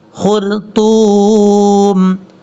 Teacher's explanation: علل خرطوم، خا حروف مستعلیٰ میں سے آپ پر پڑھیں گے، را کے اوپر جب جزم اور اس سے پہلے پیش ہو تو را پر پڑھا جاتا ہے